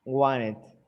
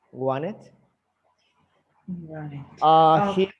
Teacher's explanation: Like you don't pronounce the T. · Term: linking